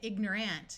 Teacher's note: this a usually will sound more like a short U or a short I so you don't really hear people say ignorant you'll hear ignorant